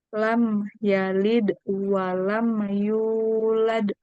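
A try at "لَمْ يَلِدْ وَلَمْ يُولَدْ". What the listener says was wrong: Oke, walam. Walam yulad. Walam. Nah, kita tahan pokoknya ya. Walam langsung masuk ke huruf setelahnya. Walam yu. Nah, kalau kita nggak tahan, walam ya itu tadi agak mantul. Walam yulad. Tapi kalau kita tahan, walam yulad. Nah, dia nggak mantul.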